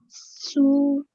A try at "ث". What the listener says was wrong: Okay, so this scene is a really pronounced S. So we say sa. This one here is a th sound. Your tongue, the tip of your tongue touches the top of your top teeth, but only the tip of them at the top, right?